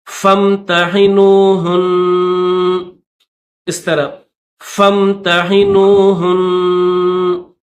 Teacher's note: فامتحنوہن، ہا کو نون کے ساتھ ملائیں گے، یہ نون کے اوپر تشدید بھی ہے اور زبر بھی ہے، اور یہاں پر یہ چھوٹا سا طوا بھی آپ کو دکھ رہا ہے، تو یہاں پر اسٹاپ کریں گے، تو اس نون کے اوپر جو زبر ہے ہم زبر نہیں پڑھیں گے بلکہ جزم کے ساتھ پڑھیں گے